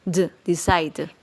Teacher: omitimos la E en la pronunciación, quedando al final un sonido como de d